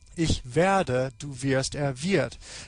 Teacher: a change in the quality of the verb, the quality of the vowel in the verb stem. E goes to I.